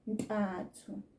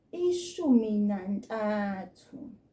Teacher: the numbers 2, 3, and 5 do change and become more nasal. So they change from bili, tatu, hlanu, from those soft sounds to the nasal sounds.